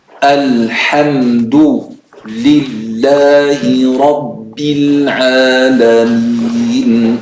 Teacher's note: the Ba is not heavy, the Ra is heavy. Ra, heavy, Ba, not heavy.